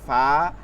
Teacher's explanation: দাঁতের আগার সঙ্গে লাগায় সদ সিন জা, 14 নম্বর মাখরাজ হচ্ছে নিচের ঠোঁটের পেট সামনের উপর 2 দাঁতের আগার সঙ্গে লাগায়